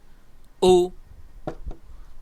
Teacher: হামজা পেশ উ, হামজাহ পেশ উ, দুই ঠোঁট গুল হবে। পেশের উচ্চারণ করার সময় আমরা দুই ঠোঁট গুল করে উচ্চারণ করব